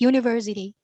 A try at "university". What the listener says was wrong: can you get the third syllable on university for me that's where the stress is